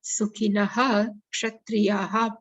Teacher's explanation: if Visarga is followed by Ksha, then we have to pronounce Visarga as it is.